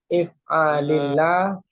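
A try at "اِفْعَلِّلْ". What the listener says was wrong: Lamnya di tasdid itu. Jadi lamnya itu di ini ya.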